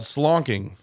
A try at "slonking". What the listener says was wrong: No, there's no SH. CH.